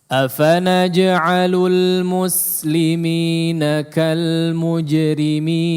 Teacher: Nah, kemudian yang kedua perlu diperhatikan juga huruf sin pada muslimin, ya. Diperhatikan sinnya jangan sampai ke shad, ya. Kalau bisa mu, ya, ketika mengucapkan mu, ya, ditarik aja bibirnya biar supaya tidak di depan muslimin, ya.